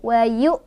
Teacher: tekan hamzahnya hamzah sukun, jadi tekan sampai kayak ditonjok gitu.